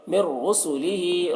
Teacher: تنوین نون کو را سے ملا کر بغیر غنہ کے پڑھیں گے، اس کو ادغام تام کہتے ہیں۔